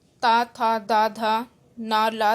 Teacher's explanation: दंते दांतों से, ता था दा धा ना ला साई दांतों से बोले जाते हैं